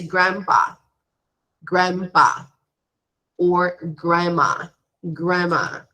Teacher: we do not pronounce the d so we say grandpa grandpa or grandma grandma okay there is